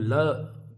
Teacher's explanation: यहां से भी हवा निकल रही है। दोनों ओर से हवा निकल रही है। तो जो है पार्श्विक तो जो ल है हमारा वो हमारा पार्श्विक ध्वनि है।